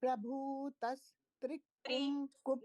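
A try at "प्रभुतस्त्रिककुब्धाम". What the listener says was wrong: नहीं नहीं, त्रि अलग बोलिए, त्रि। प्रभुतस त्रि ककुब धाम।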